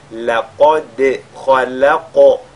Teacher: la lettre dal qui est avec al-qalqala avant et le qaf qui est avec al-tafkhim